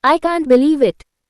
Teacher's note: practice putting stress on the word believe and using Rising intonation to convey surprise or disbelief